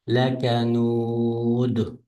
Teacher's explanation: Lakanud to'xtagan sukun o'qilgandan keyin bu dal qalqala o'qitadi.